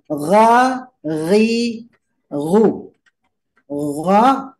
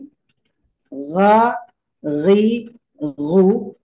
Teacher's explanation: rasakan bahwa dia keluar dari tenggorokan atas